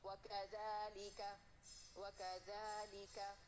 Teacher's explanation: اور مد 2 کاؤنٹ. مد یہاں باریک پڑھا جائے گا کیونکہ الف مدیہ باریک ہے. وکذالک ایسے نہیں پڑھنا.